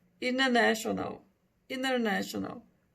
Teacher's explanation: Que o primeiro T, na maioria das vezes, fica mudo e o outro T fica com som de X, né? Então, vai ficar international.